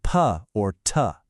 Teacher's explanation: Now try saying p or t. No buzz, right? Those are voiceless.